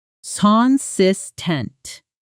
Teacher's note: Stress on the second syllable.